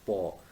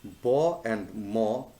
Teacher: the sound is paw, which is voiceless, and bo and mo, they are voiced